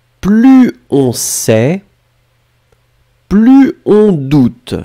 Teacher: Je ne fais pas la liaison parce que je suis très très gentil.